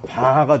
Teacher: 기식 없으면 그냥 바가 됩니다